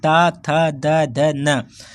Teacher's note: इसके बाद दंत से आप देख रहे होंगे कि दंत में जो ता वर्ग है, जो आपके जो ता बोलेंगे तो आप दांत में आपकी जीभ भिड़ेगी।